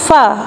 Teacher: Ketika kita mengucapkan huruf fa, maka huruf tersebut akan keluar pada bibir yang bawah dan menempati dengan ujung dua gigi seri yang atas